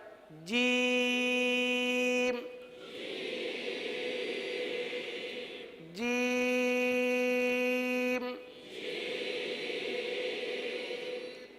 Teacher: सही बा ता सा इनको हमने एक अलिफ तक पढ़ा था जीम को हम तीन अलिफ तक खींच के पढ़ेंगे